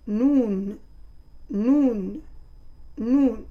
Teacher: le bout de la langue se colle au palais en ajoutant le nasement